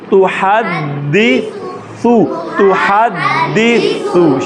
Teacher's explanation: دال اوپر زبان کی نوک اوپر دانتوں کی جڑ میں اور سا زبان کی نوک دانتوں کی نوک سے